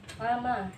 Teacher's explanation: Kemudian pada lafaz laman ada tanda wakaf dan cara bacanya lama disebut mad iwad karena ada fathah tanwin yang dibaca fathah karena ada wakaf